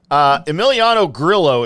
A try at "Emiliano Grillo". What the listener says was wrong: It's not, you don't say Grillo. L's are silent in Argentina. Grillo. No, it's not. It's not how you say it. Emiliano Grillo. It's Grillo.